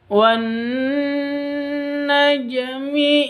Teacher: Najmi di sini ada jim sukun, qalqalah sughra.